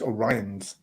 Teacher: both populations pronounce the second o as a schwa vowel